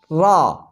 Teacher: را زبان کی نوک اور مقابل کے تالو سے ادا ہوتا ہے۔ را زبان کے اوپر بالمقابل تالو پر زبان لگتی ہے تو اسے را، آپ بول کر دیکھیں، را، اس سے را ادا ہوتی ہے۔